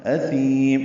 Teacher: یہ سین نہیں ہے، یہ تھا ہے، نرمی سے پڑھا جائے گا